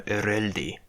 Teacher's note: liquid dissimilation would happen, so it would become ereldi